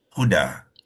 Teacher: kita akan bacakan dal ni dua harakat satu baris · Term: mad iwab